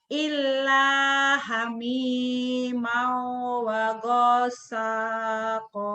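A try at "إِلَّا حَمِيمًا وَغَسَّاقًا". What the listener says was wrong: Kurang nyamber. Iya, wagosnya kan ada tasdid tuh di situ. Illa hamimau wagossa. Kok kurang nyamber, nyambernya kurang.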